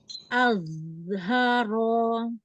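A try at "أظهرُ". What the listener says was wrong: Ya, tebalkan lagi zo-nya.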